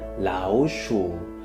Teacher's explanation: the first character, 老, actually changes to the second tone